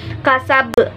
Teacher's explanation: Kasab termasuk qalqalah berada di akhir ayat dan termasuk qalqalah besar.